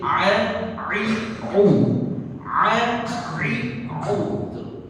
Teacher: Kalau kita mengucapkan dengan kita menutup hidung kita tetap bunyi. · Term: huruf tenggorokan